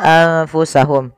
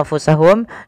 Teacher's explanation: kita membacanya menyamarkan nunnya kepada huruf Fa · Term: Ikhfa